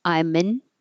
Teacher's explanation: you don't have to say the perfect a for an. It can just get shortened to in or un. I'm an And then the n connects to indoor.